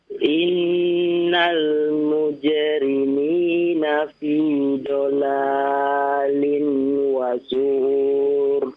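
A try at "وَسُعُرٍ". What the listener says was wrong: Jangan dipanjangkan ya. Kalau di akhir tidak ada huruf maddiyah maka tidak boleh dipanjangkan ya. Fi dhalalin wa su'ur.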